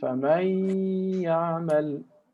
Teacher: we have idgham with ghunna. And we have two harakat with nasal.